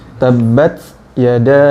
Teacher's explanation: Untuk surat Al-Lahab tabbat di sini ta-nya sifatnya, kita membicarakan sifatnya, sifatnya hames, jadi ada hembusan angin. Tabbat, ada desis sedikit. Tabbat yada, jadi bukan flat.